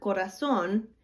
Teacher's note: we know that the stress on that word is going to go at the end of the word because at the end of the word we have an accent